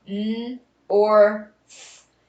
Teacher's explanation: It has the R controlled O, and it has the TH, and it has the unvoiced TH.